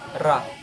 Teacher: Sa pangingilagid naman, ang ibabaw ng dulo ng dila ay dumidiit sa punong gilagid tulad ng pagbigkas ng ra.